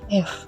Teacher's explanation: bibir bawah dan ujung gigi atas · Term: labiod dental